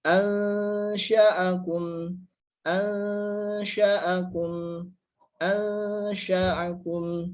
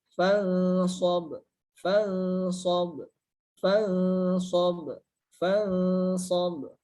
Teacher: dibacanya dengan cara disamarkan dengan disertai gunnah atau dengung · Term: ikhfa hakiki